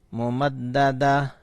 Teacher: گول والا تا جب ساکن کرتے ہیں تو یہ ہا بن جاتا ہے. اگر وقف کریں گے تو یہاں ہا بن جائے گا.